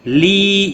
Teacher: یا مدہ ہے، 1 الف کے برابر کھینچ کر پڑھیں گے